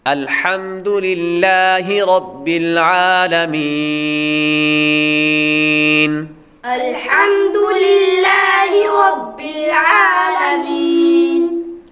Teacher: لفظ اللہ کے لام سے پہلے حرف کے نیچے زیر ہے، تو لفظ اللہ کے لام کو باریک پڑھیں گے